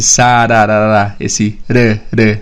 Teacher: Um tapinha que a língua dá no céu da boca para fazer esse som de r. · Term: flap T